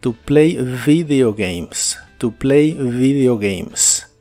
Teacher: la V o V chica como la conozcas es labial y vibrante en inglés